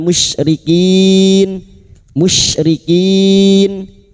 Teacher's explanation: Bertemunya mat dengan huruf hidup yang dibaca waqaf. Mat arid li sukun 4 harokat kita panjangkan